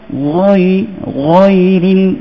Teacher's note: Lepas tu ghain tu huruf isti'la. Meninggikan sebutan dia.